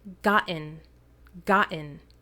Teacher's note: The T is pronounced with a glottal stop.